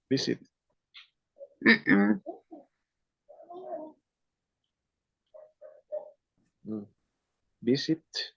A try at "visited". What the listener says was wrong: No, it's ED sound. How would you pronounce with ED sound? Visited. Visited. That would be visited. Because the last consonant is letter T, the pronunciation is ED.